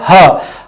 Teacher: काकल्य व्यंजन वे व्यंजन होते हैं जिनके उच्चारण में मुख खुलने के एकदम झटके से हवा बाहर आती है और उस वर्ण का उच्चारण होता है, जिसमें आता है ह। ह का उच्चारण करेंगे तो मुख जैसे ही खुलेगा, हा के उच्चारण में हवा झटके से बाहर आती है।